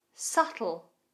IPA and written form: sʌtəl (Subtle)